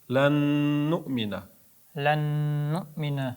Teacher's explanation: Ozgina ikki harakat ushlab turiladi g'unna uchun.